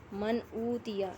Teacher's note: من اوتیا، نون ساکن کے بعد حمزہ حروف حلقی میں سے آ رہا ہے، اظہار ہوگا، نون کی آواز کو ظاہر کر کے پڑھیں گے۔ من اوتیا، واو مدہ ہے، ایک الف کے برابر کھینچ کے پڑھنا ہے۔